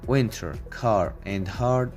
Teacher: Americans pronounce R sound in all environments, including after vowels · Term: rhotic